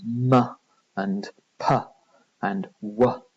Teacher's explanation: with m and p and w sounds, we're using both lips. So those are called bilabial sounds.